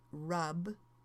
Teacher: the buh at the end of the verb rub is actually a voiced sound